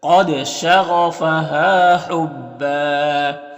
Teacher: قاف حروف مستعلیہ میں سے ہے اور دال میں قلقلہ ہوگا، غین بھی حروف مستعلیہ میں سے ہے، ہاں میں الف مدہ ہے۔